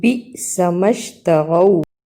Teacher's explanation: با کو حمزہ سے ملایا اور چھوٹا سا جھٹکا لگایا